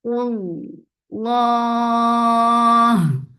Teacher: Lafz jalala will be heavy because there is dhamma before it.